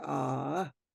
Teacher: and a a single a added with a tone Mark ah your voice goes up that means yes